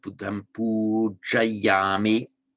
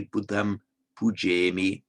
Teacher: the aya becomes an a in Pali. So pujami.